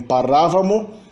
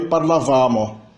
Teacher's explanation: Mas, mais uma vez, no passado imperfeito, as pessoas do plural têm, no siciliano, uma acentuação proparoxítona. E no italiano, uma acentuação paroxítona.